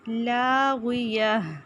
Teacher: فیہا لاغیہ لا الف مدہ خالی الف سے پہلے زبر ایک الف کے برابر لمبا کریں گے. غین موٹا اور اینڈ پہ ہا کی آواز آئے گی